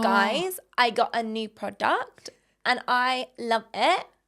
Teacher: intonation is like everything's a question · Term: new influencer voice